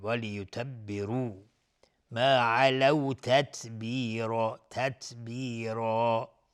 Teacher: وليتبروا را اینجا حکمش استعلاس ضمه داره چون وليتبروا ما علوا تتبیرا. تای ساکن اینجا صفت همس داره. تتبیرا و را هم اینجا حکمش استعلاس چون تنوین نصب روشه و الف هم تابع را حکم استعلا به خودش میگیره.